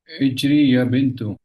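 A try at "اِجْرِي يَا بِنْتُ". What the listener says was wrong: इजरी है ना। ये इजरी ऐसा है, ध्यान कीजिए, जानबूझ के वो सर ला रहा है, ये इजरी है बिना घसीटे हुए, इजरी। इजरी है, ध्यान किया आपने, इजरी है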